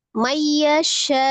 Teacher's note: nun sukun ketemu dengan ya, idgham bi ghunnah. Diidghamkan ke dalam huruf ya disertai dengan ghunnah.